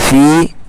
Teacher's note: یا ساکن سے پہلے فا کے نیچے زیر ہے، یا مدہ ہوگا، تھوڑا سا کھینچیں گے